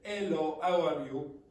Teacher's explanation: so without the H sound at all